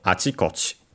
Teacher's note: the accent is on the first chi, because it's technically the last syllable of the first part of the compound